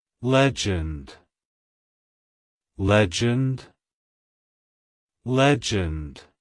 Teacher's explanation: originating from the English vocabulary it's pronounced as Legend legend legend to pronounce it correctly emphasize the first syllable LJ and end with a soft d sound avoid pronouncing it · emphasize the first syllable lej and end with a soft d sound